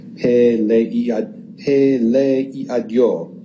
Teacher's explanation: two vowels that sort of smush together, where the first one is pronounced almost like a Y sound. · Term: synesis